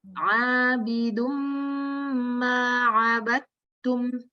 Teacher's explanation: Mimnya nanti lebih ditahan lagi ya Bu ya, ada gunnah.